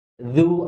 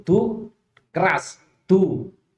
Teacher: Qul a'udzu, dzu bukan tu tapi dzu. Dzu ada aliran sedikit, beda dengan tu. Tu keras.